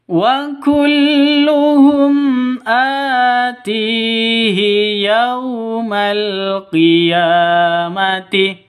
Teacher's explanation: Yau sifat lin, lentur, lemes, tidak boleh disentak, tidak boleh didengungkan, dan tidak boleh dipanjangkan